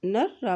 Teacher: नून की ज़बर को रा के साथ मिलाएंगे क्योंकि रा के पर भी शद है